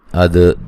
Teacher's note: دال پہ قلقلہ کرنا ہے، ہلا کے پڑھنا ہے